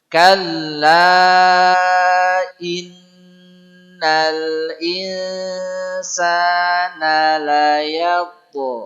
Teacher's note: Kalla inna nun tasydid tahan, tidak boleh tergesa-gesa. Namanya gunnah.